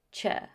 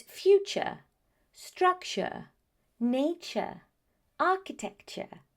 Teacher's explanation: The T-U-R-E ending is very often pronounced as ch.